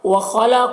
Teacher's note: خا اور قاف دونوں حروف مستعلیہ میں سے ہے، اسے پر پڑھیں گے۔